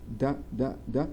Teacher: Place of articulation, الداء بيطلع من عند alveolar. The narrowing of the vocal tract involves the tongue tip and the alveolar ridge. يعني مقدمة اللسان بتصيب المنطقة اللي اسمها جسر الأسنان اللي هي alveolar ridge. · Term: oral stop